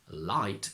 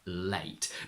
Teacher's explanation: the diphthong a turns into something like I but I disagree what I hear is more of an extremely open e sound almost as if you pronounced the e in a as open